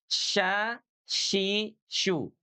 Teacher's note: Kalau syin tengah lidahnya yang keangkat langit-langit